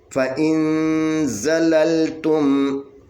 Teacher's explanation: یہاں پہ اخفا ہوگا، حقیقی مال غنہ، اخفا حقیقی مال غنہ، نون ساکن کے بعد زا ہے، زا حروف اخفا میں سے ہے، یہاں پہ 2 حرکت کے برابر غنہ ہوگا